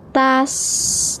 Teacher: Kemudian ta fatah sin sukun ini dibaca sebagai tas. Nah, ada juga aliran napas. Ya. Jadi alirkan seperti tas, jangan ditahan.